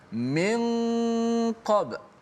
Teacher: sembunyikan makhraj nun yang mati tu, jangan letak hujung lidah ke langit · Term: ikhfa